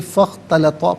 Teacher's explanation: من السماء، فا اختلطا، فا پر زبر، اس سے اختلطا کی خا کے ساتھ ملائیں گے، درمیان میں سے الف یعنی حمزہ کو حذف کریں گے، فاختلطا پڑھیں گے۔